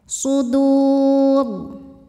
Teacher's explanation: Madnya mad arid li sukun karena mad tabi'i bertemu huruf yang disukunkan karena waqaf. Mad tabi'inya waw sukun didahului dhammah, huruf yang disukunkannya ra.